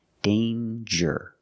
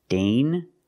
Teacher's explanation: There's no nasal sound. There's no ng. It's a regular N. Danger. With the J sound, like jump and juice.